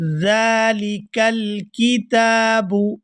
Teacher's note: ذالک یہاں پر ذال کے اوپر کھڑی زبر ہے تو اس کو کھینچ کر ادا کریں گے۔